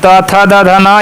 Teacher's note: और त थ द ध न ये दंत होते हैं, दांतों से इसमें लगते हैं